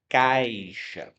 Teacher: O meu som saiu do A, que é sempre uma vogal, e foi para o som mais fraco, que é a semivogal. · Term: ditongo